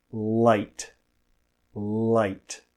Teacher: The light l comes at the beginning of words. The tip of the tongue, which is this part, is placed above and behind the front teeth, which we call the alveolar ridge